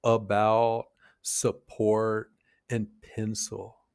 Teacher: It's a really short, weak, neutral vowel sound. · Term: schwa sound